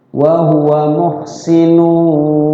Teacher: Digunna artinya dilagukan, ditahan ya. Barang dua ketukan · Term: Idgham bigunah